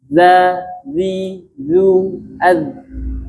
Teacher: melafazkan huruf dza itu adalah makhrajnya di belakang gigi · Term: salah makhraj